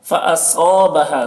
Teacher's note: صاد کو پر پڑھیں گے کیونکہ صاد حروف مستعلیہ میں سے ہے